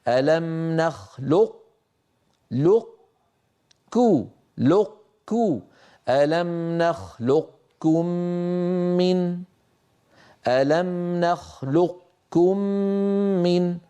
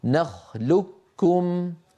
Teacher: كما أننا في أحط أطبقنا على طاء وجافينا عن تاء، هنا يطبق على قاف ثم يجافي عن كاف، من غير طبعا قاف غير مقلقلة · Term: بإبقاء صفة الاستعلاء